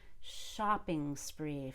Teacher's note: spree starts with a consonant and not a vowel shopping spree i'm gonna hold that ng all the way to spree